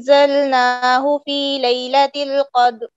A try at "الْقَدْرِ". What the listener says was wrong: یہ قد نہیں کرنا, را پہ وقف ہونا چاہیے. را آپ وقف کر دیتی ہیں دال کے اوپر قد, بس را کی آواز ہی نہیں آتی, را کی آواز آنی چاہیے اور را کو موٹا پڑھنا ہے.